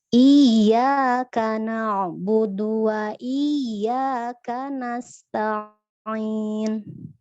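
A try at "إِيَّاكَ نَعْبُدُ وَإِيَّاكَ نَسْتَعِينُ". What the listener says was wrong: Kadangkala huruf taknya ngikut ke ain, Mbak. Jadi kanasta'in, jadi Kanasta'in. Kanasta'in. Kanasta'in. Kalau ke bawah huruf yang lain jadi huruf tebel semua kayak gitu.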